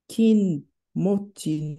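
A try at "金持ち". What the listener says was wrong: In this case, it'd be pronounced as kane, but that's a kin would make logical sense, but it's kanemochi.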